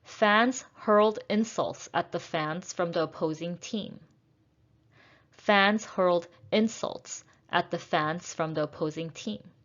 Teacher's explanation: insults is a noun so i will stress the first syllable